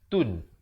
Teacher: Nyatakan saja dengan jelas. Tun. Jangan panjang. Jangan tambah dengung. Jangan tambah harakat. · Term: izhar halqi